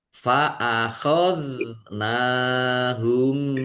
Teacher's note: zal sukun bukan kolkolah ya, jangan dipantulkan